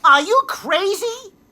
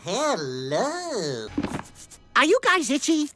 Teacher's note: if the ra is not followed by a vowel he doesn't pronounce it